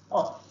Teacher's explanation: apabila pangkal lidah diangkat ya, diangkat ke langit-langit lembut ya, di mana ia ditekankan pada anak lidah, keluar daripadanya huruf qaf ya, qaf.